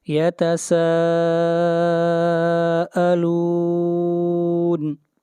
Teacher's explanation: یہاں پر مد متصل ہے، اس مد کو 3 الف کے برابر کھینچ کر پڑھیں گے